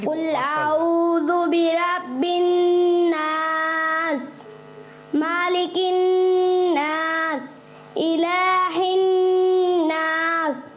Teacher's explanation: قل اعوذ, ذال ان کا تھوڑا سا کمزور سننے میں آیا